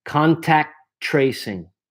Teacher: the second T in contact, I almost don't say it because there's another T here. Because if I go slowly, you're going to want to put an A after here.